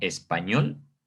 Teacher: como nosotros la conocemos como español, la sílaba tónica pues va a recaer en esta última sílaba